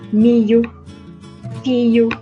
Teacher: E também é frequente a iotização do LH